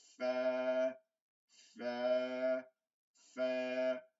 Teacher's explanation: ঠোঁটটা লাগানো থাকবে দাঁতের সাথে